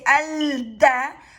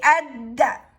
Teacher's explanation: So when you're pronouncing lam, you are actually going to pronounce lam from da, and instead of say al-da, you're going to say ad-da. And like you are going to swallow the sound of lam into da, and you are going to double the sound of da, and that means adding a shadda.